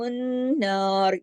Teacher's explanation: نون پر جو تشدید ہے یہ بتا رہی ہے کہ یہاں 2 نون ہیں تو یہاں غنہ کرنا ہے، اور یہاں بڑا غنہ ہوگا.